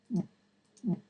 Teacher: that very distinctive swallowing sound as the larynx is lowered for the implosive